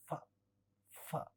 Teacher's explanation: एक अपर टीथ फ फ, टीथ, और लोअर लिप टीथ के बीच में जाता है और अपर लिप लोअर लिप को टच नहीं करता, इसलिए इसको लेबियोडेंटल साउंड कहते हैं · ये लेबियोडेंटल है, इसमें टीथ और लिप्स की जरूरत होती है, इसलिए इसको लेबियोडेंटल कहा जाता है.